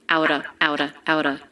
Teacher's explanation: the word of is reduced to just the schwa